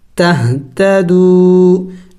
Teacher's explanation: والفرقان، نون زبر نا، والفرقان، لام زبر لا، عین لام زبر عل، لام زبر لا، لعل، کاف میم پیش کم، لعلکم، تا ہا زبر تہ، دا زبر دا، تہ دا، دال واو پیش دو، واو مدہ ہے، اس کو بھی کھینچنا ہے ایک الف کا مقدار